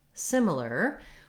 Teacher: we have first syllable stress so the sim syllable is long and the other syllables are short and reduced the first letter i says the sound like in it as